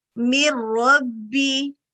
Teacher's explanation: اب آپ نے یہیں پر ڈیسائیڈ کر لیا کہ یہاں پر ادغام ہو رہا ہے, ہم نے مرج کرنا ہے, لیکن ایسا مرج کرنا ہے کہ را غالب آ جائے گا